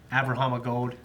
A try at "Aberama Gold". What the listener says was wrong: Aberama. There's no H. It's like, like Futurama. It's like Abba Rama. Like the band. Abba Rama.